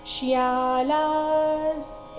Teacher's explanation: ವಿಸರ್ಗದ ಉಚ್ಚಾರಣೆ ಅರ್ಧ ಸ ರೀತಿ